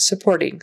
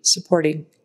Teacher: So emphasis on the second syllable and short U in the front, supporting. That T is kind of a tap T